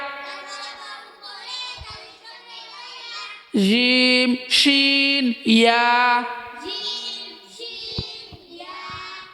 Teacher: জিহ্বার মধ্যখান তার বরাবর উপরে তালুর সঙ্গে লাগাইয়া